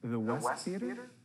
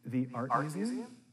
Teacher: Make your voice go up at the end. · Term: rising intonation